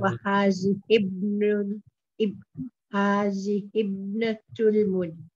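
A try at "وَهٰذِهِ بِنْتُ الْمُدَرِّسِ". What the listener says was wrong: keep it separate. There is no alif here, so we'll keep it separate. Hazihi bintul mudarrisi.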